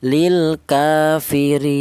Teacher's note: Tul itu artinya panjang yaitu ee tiga alif atau enam harakat ya.